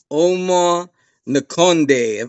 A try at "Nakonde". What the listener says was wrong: Conde, yeah, the N is silent. That wasn't bad though. Conde.